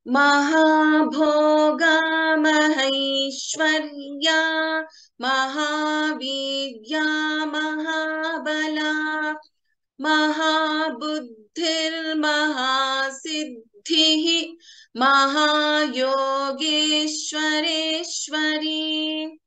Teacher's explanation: we can take a pause after Mahasiddhihi. So we can chant the complete Visarga here